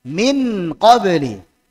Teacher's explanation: Jadi idhar itu jelas N. Nun sukunnya dibaca jelas yaitu N.